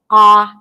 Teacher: we're going to start again with the bottom back, ah, as in father